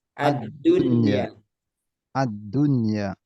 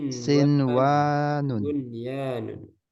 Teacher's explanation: Dia dibaca jelas nunnya, bukan dileburkan. Para ulama sepakat untuk membacanya secara jelas karena satu kata. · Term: idhar mutlak